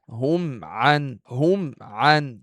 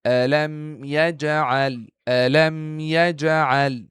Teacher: a complete contact with the two lips in order to pronounce the Meem Sakin clear